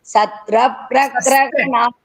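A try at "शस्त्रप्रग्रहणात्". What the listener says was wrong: சஸ்திரதான் வருதுப்பா, சத்ரன்னு வருது.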